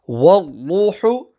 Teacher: Wal-ruhu is ra mushaddada, both ra's will be pronounced full mouth.